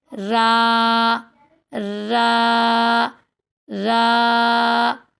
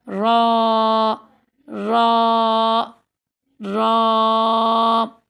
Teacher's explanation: پہلے باریک پڑھتی ہوں، را را را، اب میں اس کو موٹا کر کے پڑھوں گی